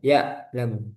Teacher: Ain ada aliran bainiyah ya'lamu jangan macet seperti hamzah